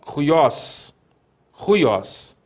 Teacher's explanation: a vogal breve y, mais a semivogal iota